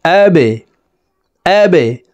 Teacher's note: বা কলকলার হরফ নিচের দিকে ধাবিত করে ধাক্কা দিয়ে উচ্চারণ করব। প্রিয় দর্শক দেখুন, এই যে বার নিচের দিকে ধাবিত করা ত্রিভুজ চিহ্ন দেওয়া আছে, তো আমরা নিচের দিকে ধাবিত করে ধাক্কা দিয়ে উচ্চারণ করব।